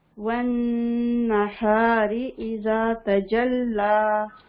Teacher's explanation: تشدید ہے نون کے اوپر غنہ کریں گے. والنہار ہا کو سینے کی طرف سے نکالیں گے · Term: اقصی حلق